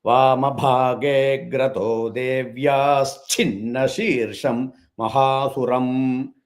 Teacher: So Devyaha and Chinna, that Visarga will become Ish sound.